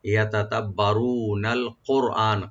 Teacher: আর র এখানে একটু পুর করে এটা মোটা করে পড়তে হবে ডিপ করে